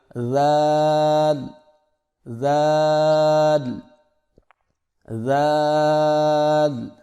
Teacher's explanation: اگلا حرف ہمارے پاس ہے ذال، سو زبان کی نوک کو سامنے والے اوپر کے 2 دانتوں کے اندرونی کناروں سے نرمی سے لگا کر باریک آواز میں پڑھیں